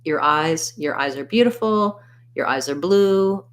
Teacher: in fluent speech your is often reduced to more of an er sound instead of an or